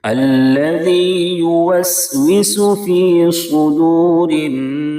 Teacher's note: را کے نیچے زیر ہے اس لیے را کو باریک کریں گے. نون کے اوپر تشدید ہے، نون میں ہر حال میں غنہ ہوگا. وقف کریں گے تو سین ساکن ہو جائے گی.